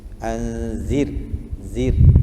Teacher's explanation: zir tu ra mati, sebelumnya terdapat huruf yang berbaris di bawah. Ra tu ra nipis